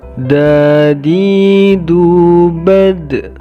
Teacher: ujung lidah menempel pada pangkal gigi seri atas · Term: huruf dan